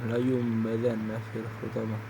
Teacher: Huruf iqlab hanyalah satu ialah ba. Maka bacaan nun sukun atau tanwin berubah menjadi bunyi mim.